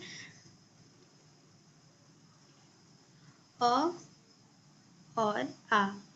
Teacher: अ और आ का उच्चारण होता है कंठ के द्वारा